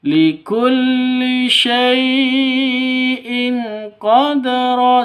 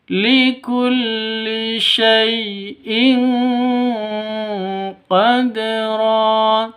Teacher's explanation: Qad ja'alallahu likulli syai'in, likulli pendek, syai' sifat lin, lentur lemes, tidak boleh disentak, tidak boleh dipanjangkan.